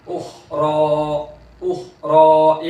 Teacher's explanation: तो खा को पूर करेंगे, आवाज जारी रहेगी, और रा को भी पूर करेंगे, इसलिए कि उसके ऊपर खड़ा जबर है।